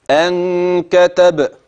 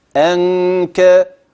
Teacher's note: الهمزه الالف النون اللي بعديها اخفيت مع وجود غنه